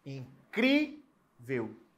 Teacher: O cri é a sílaba tônica e é uma penúltima sílaba e ela é terminada em L.